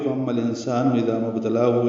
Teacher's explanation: انسان میں نون ساکن کے بعد سین آنے کی وجہ سے اخفا ہے، نون کے بعد چھپائیں گے · ام میں میم مشدد پہ غنہ ہے، حمزہ کی آواز واضح ہونی چاہیے اور میم مشدد پہ غنہ ہو، آواز ناک کے بعد سے مل جائیں۔